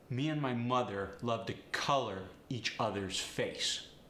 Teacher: the short u sound that come with words like mother color love go to the sharp o sound